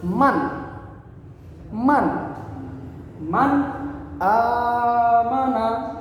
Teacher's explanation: tidak dengung dan juga tidak panjang